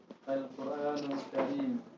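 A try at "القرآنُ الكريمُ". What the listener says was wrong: Jangan jaga sukun ya. Al-Qur'anul Karimu.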